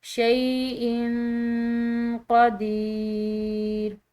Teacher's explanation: हमज़ा की तनवीन के बाद क़ाफ हरूफ इख्फ़ा में से है, तो इसको हमने मख्फ़ी अदा करना है। और यहाँ पर या साकिन या मद्दा है क्योंकि इसका पीछे वाला हर्फ ज़ेर के साथ है, तो इसको हम खिंचाव देंगे, शैइन क़दीर। · यहाँ पर हमज़ा की तनवीन के बाद क़ाफ हरूफ इख्फ़ा में से है, तो इसको हमने मख्फ़ी अदा करना है। और यहाँ पर या साकिन या मद्दा है क्योंकि इसका पीछे वाला हर्फ ज़ेर के साथ है, तो इसको हम खिंचाव देंगे